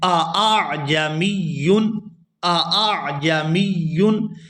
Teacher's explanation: یہاں پر دو حمزہ اکٹھے ہیں اور اس کے بعد ہے عین، اور یہ تینوں حروف حلق سے ادا ہوں گے